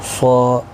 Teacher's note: صا الف مدہ ہے 1 الف کی مقدار کے برابر کھینچ کر پڑھیں گے. صاد حروف مستعلیہ میں سے بھی ہے، پور پڑھنا ہے.